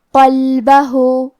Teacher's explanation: کلمت قلبہ میں قاف کی ادائیگی زبان کے جڑ اور تالو کے نرم حصے سے ہے. قاف حروف تفخیم میں سے ہے تو ہمیں یہ حرف کو موٹی آواز میں پڑھنا ہے قلبہ.